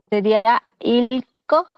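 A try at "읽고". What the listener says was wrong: Ilgo, ilgo con G, ¿sí? No es extensificación. Ilgo, ilgo, ilgo.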